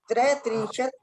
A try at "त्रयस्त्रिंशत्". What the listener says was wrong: त्रयस्त्रिंशत् स का उच्चारण होगा त्रयस्त्रिंशत्।